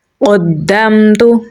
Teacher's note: میم ساکن کے بعد تا ہے تو یہاں پر ہم اظہار شفوی کریں گے۔ میم میں صفت توسط پائی جاتی ہے تو سانس تھوڑا جاری کریں گے · قاف کو پر یعنی موٹا پڑھیں گے اور دال کے ساتھ ملائیں گے کیونکہ دال کے اوپر تشدید ہے